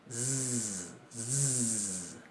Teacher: En lingüística se la llama alveolar fricativa sonora.